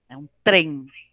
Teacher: o trem não tem I ali